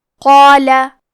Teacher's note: تو کیونکہ اس کے پہلے حرف القاف ہے تو ہمیں قاف کو اور مد الف کو دونوں کو بھاری آواز میں پڑھنا ہے